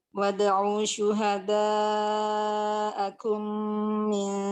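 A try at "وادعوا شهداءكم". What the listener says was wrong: Kurang. Kalau itu masih 5. 6 harakat sudah. Wad'u syuhada'akum.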